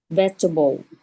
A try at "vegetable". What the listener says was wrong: Vegetable. Vegetable. Try to get a little bit more of the veg. Veg.